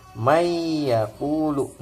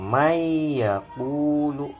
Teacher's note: melebur bacanya Nun nya hilang eh disatukan dengan huruf yang di depannya nah di depannya nurfia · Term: idgham